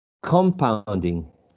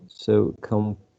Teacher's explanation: I will use a schwa in the first syllable because I'm shifting the stress to the next syllable.